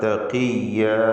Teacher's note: ഖാഫിന് ഏറ്റവും കുറഞ്ഞ തഫ്ഖീം കൊടുക്കുക, കസ്റായതുകൊണ്ട്. ഇസ്തിഅലാന്റെ ഹർഫായ ഖാഫ് തഖിയ്യ എന്ന് ഉച്ചരിക്കുക.